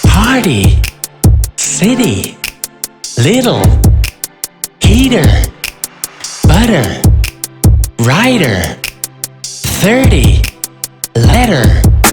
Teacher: When the letter T sounds like D in American English, it's a flat T.